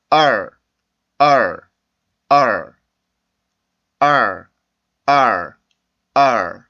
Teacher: 이렇게 모음 뒤에 오는 알 발음 같은 경우는 그 입술이 나올 필요는 없고요. 혀 모양만 그냥 그 바가지 모양으로 바뀌면 돼요. 밑에 있던 혀가. 자, 그래서 소리를 내보면 R, R, R, R, R, R.